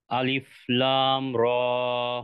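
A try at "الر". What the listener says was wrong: লামে আরো টান হবে, আলিফ লাম।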